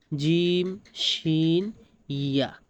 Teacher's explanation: জিহ্বার মধ্যখান তার বরাবর উপরে তালুর সঙ্গে লাগাইয়া জিম শিন ইয়া